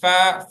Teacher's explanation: ஃபக்கு தான் பல்லு உதட்டுல படணும்